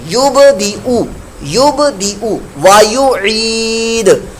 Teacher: نہیں ہے، یہ اوپر یا کا حمزہ لگا ہوا ہے، لہذا حمزہ کے اوپر جو پیش ہے تو او کی آواز پیدا ہوگی